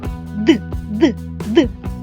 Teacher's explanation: ми промовляємо звук д наші губи та зуби трохи привідкриті а кінчик та передня частина спинки язика упирається в верхні зуби та альвеоли горбики за верхніми зубами створюючи перешкоду для повітря що виходить з ротика